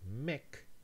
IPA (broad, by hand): mek